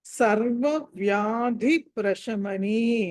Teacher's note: వ్యాధి దగ్గర ధా అన్నది మీకు మహాప్రాణం ఒత్తి పలకాలి